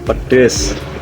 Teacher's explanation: suku kata kedua mengalami perubahan menjadi E, sehingga diucapkan pedes. Perubahan bunyi ini disebut substitusi vokal, yaitu pergantian satu fonem vokal dengan fonem vokal lain.